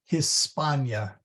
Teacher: I'd hit the H pretty hard